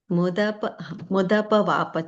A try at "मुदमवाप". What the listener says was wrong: No, Ma sound. Mudama vapa.